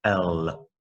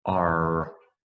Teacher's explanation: for the l it touches the roof of your mouth here we have an r and that does not touch your mouth